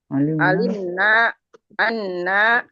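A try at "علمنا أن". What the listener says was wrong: Jangan panjang. Itu mah. Naknya panjang. Alimna anna gitu.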